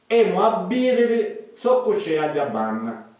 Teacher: Abbiriri lo pronunciamo con due B.